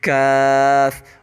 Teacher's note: کاف کا articulation point ہمارا ٹنگ کا ڈیپسٹ پارٹ اور ہمارا اپوزٹ ہارڈ پیلیٹ یوز ہوگا